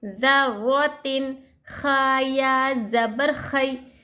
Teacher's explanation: تنوین کی اور نون ساکن کے آواز کو ظاہر کر کے بلا گنہ کے پڑھیں گے ، یہاں تنوین کے بعد حروف حلقے میں سے خا ہے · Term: اظہار